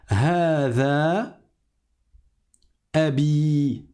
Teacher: Hada, il faut prolonger. Abi, la première syllabe, elle n'était pas prolongée, c'était a, et la deuxième, elle était prolongée, c'était bi. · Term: voyelle longue